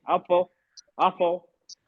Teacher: कलकला है, मतलब आवाज पलटती है।